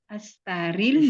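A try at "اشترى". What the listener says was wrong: Ishtaro. Ini ya-nya bukan ya karena nggak ada titik 2. Ini alif.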